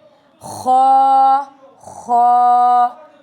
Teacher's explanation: حلق کے درمیان، حلق کے اوپر والے حصے سے خو نکلتا ہے، آواز میں بھاری پن ہے اس کا. خو from the upper throat, heavy sound, ٹھیک ہے؟